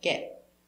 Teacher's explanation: But we use a stop T for the T so it sounds like get. You put your tongue up and stop.